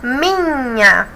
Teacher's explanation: minha mi é a sílaba mais forte